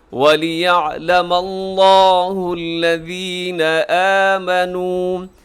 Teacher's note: یہاں لفظ اللہ موٹا رکھیے گا کیونکہ اس سے پہلے میم کے اوپر زبر ہے۔ اسی وَلِيَعْلَمَ اللَّهُ ایسے نہیں کرنا آپ نے بلکہ موٹا کرنا ہے لفظ اللہ کو.